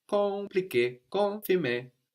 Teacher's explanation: The M is kind of swallowed into the vowel before.